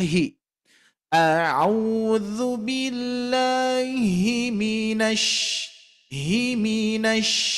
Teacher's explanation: minas ini posisinya rendah Bu Pak ya posisinya lebih rendah daripada Hi